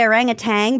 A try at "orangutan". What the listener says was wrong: I think it's tan. I don't think it's tang.